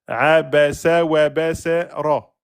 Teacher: c'est comme si le sa était accroché au wa.